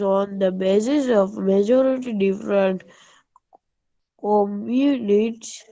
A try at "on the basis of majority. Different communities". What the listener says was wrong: When there is after majority, there is a full stop, no? So you have to have a pause, okay? थोड़ा रुकना होता है.